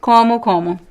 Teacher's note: the first o is actually a little bit nasal